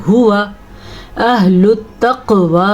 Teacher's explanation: हुवा अहलुत तक़वा व अहलुल मग़फ़िरा, हुआ अक्सर लोग इसको पढ़ते हुआ, ये गलत है, ये है हुआ अहलुत तक़वा। क़ाफ को पुर भी पढ़ना है और क़ाफ के ऊपर कलकला भी हो रहा है क्योंकि क़ाफ हुरूफ़े कलकला में से है।